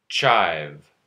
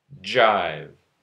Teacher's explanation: Ch and j are both post-alveolar affricate consonants. Ch is unvoiced, j is voiced.